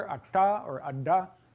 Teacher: your tongue is curled back a little bit further than it would be for a T, and it's making a closure if you're making a stop right there. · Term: Retroflex sounds